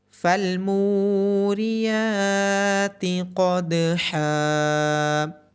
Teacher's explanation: قوف کی آواز موٹی پڑی جائے گی اور دال پہ قلقلہ ہوگا۔